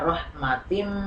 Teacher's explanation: tanwin kasrah bertemu dengan mim dibacanya masuk dengan dengung maka dibaca rahmatim ya Kemudian yang kedua minallah ini